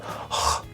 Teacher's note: the sound it makes is similar to the H, but it's more further back in the throat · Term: H bar